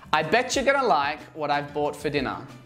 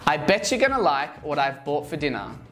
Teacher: the t in what becomes a flat t sound, which sounds like a d as it is surrounded by two vowels